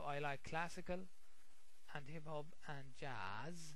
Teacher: you say when you pronounce when you say each item okay what we do we raise our voice before we say and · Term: rising intonation